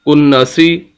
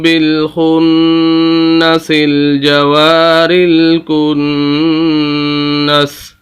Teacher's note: غنہ کریں گے، 2 مرتبہ نون پڑھا جائے گا، غنہ بھی کریں گے